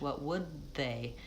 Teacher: Same thing with the D, I'm not saying what would they with a break, I'm moving from D to TH, what would they? My tongue is getting ready for that TH right from the D